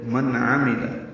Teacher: نون ساکن کے بعد عین آنے کی وجہ سے اظہار ہے